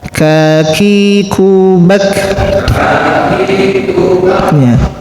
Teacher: Kalau tidak keluar desahannya maka kaf ini akan menjadi huruf qof ya. Akan menjadi huruf qof ya.